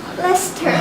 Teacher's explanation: The middle syllable is omitted.